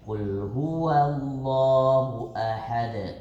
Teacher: Qalqalahnya kubra. Besar tapi bukan akbar. · Jadi had di situ enggak ada space untuk pantulan ke depan. Jadi tetap e jadi ketika ahad itu langsung mantul ahad.